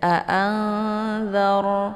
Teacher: Jangan dibuka mulutnya terlalu lebar ya, tapi anzar. Cukup ra-nya itu dinaikkan ke atas ujung lidahnya hampir menempel dengan langit bagian tengah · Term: ra sukun